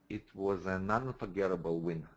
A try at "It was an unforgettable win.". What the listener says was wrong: There you go. Bingo. Got it.